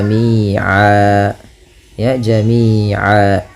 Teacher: Kalau kita waqaf maka tanwinnya diiwadkan, dibadalkan, diganti menjadi fathah saja ketemu alif. Maka jami'an berubah menjadi jami'a. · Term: mad iwad